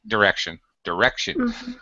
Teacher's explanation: the middle syllable stressed so the first and last syllable are unstressed so short vowel sounds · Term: short eye